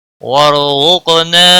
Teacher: قاف حروف مستعلیہ میں سے ہے، پر پڑھا جائے گا، اس پر قلقلہ بھی ہوگا